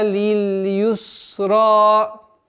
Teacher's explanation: Удваиваем в размере 2 огласовок фатхи ра. И твердое произношение ра.